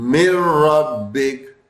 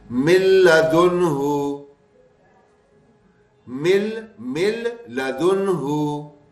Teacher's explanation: لام اور را ہم نے بتایا بغیر غنے کے ملیں گے